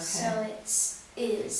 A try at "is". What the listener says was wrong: It's more of a schwa sound, so I'm going to put that back in, and when it comes back up, good. What kind of vowel, long or short?